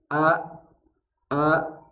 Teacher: sekali maka a a Itu adalah huruf bantu di awal a tiba-tiba suara kita langsung terhenti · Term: Hamzah sukun